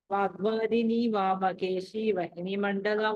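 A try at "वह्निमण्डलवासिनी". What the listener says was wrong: ఇది వన్హి మండల, వహ్ని కాదు, వన్హి మండల వాసిని. వనహి ఫస్ట్ హి వన్హి మండల వాసిని.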